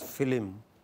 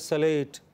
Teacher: They add an extra sound to break the cluster of two consonants.